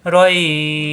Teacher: এই রই লিনের হরফ রই মিলবে বায়ের সাথে, রইবে নরম করে 1 আলিফ টানতে হবে, আর বায়ে সাকিন হয়ে যাবে।